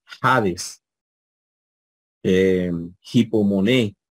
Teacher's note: es un sonido que se produce aquí en el velo de la garganta. También se le dice sonido velar, gutural, también se le dice como un sonido de glotis, como eso que hacen los franceses o los mismos, las mismas personas del Medio Oriente, ¿verdad? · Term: espíritu áspero